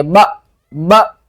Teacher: با کو جھٹکے کے ساتھ پڑھیں گے جب ہم حمزہ کے ساتھ ملائیں گے